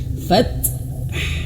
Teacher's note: ketika huruf ta dan ha, cara bacanya huruf ta-nya itu dianginkan dulu sedikit.